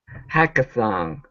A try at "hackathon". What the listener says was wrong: Make sure to pronounce that N instead of hackathon. On. Use your tongue to pronounce that N.